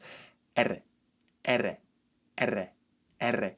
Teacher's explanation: When you perform a single R sound, your tongue has to touch the alveolar ridge area only once, which results in a very short sound R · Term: simple ere, simple R